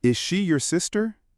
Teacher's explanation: voice goes up on sister. That rising inonation is the signal that we are expecting a yes or no answer.